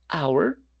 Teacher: la H no suena, por eso decimos an hour